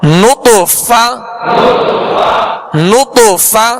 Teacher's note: فا کی ادائیگی اس سے مخرج سے کیجئے کہ اوپر کے سامنے والے دو دانتوں کے کنارے اور نچلے ہونٹ کا تر حصہ، اس سے ادا ہوتا ہے فا